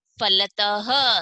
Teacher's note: त के बाद में ह की ध्वनि आएगी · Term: विसर्ग